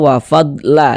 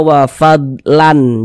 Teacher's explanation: Jangan dibaca wafadlan jangan tapi dibaca la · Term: mad iwad